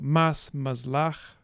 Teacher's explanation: Voicing in fricatives in this language is allophonic. So because we have this s phoneme within two voiced segments, in between two voiced segments, it will be voiced as well. So that's why I'm putting in Z.